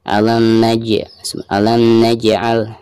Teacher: Huruf jim merupakan salah satu daripada huruf qalqalah dan posisinya di sini ada di tengah-tengah bacaan dan ketika sukun ya, maka dihukumi qalqalah sugro. Cara membacanya itu harus dipantulkan dengan suara pantulan yang tipis ya